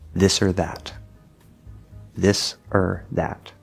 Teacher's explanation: Now, the full pronunciation that would be nice and clear would usually have an O sound. However, in actual speech, the word or, for example, is normally not stressed.